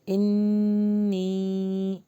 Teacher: یا مدہ بھی اور غنہ بھی ہو رہا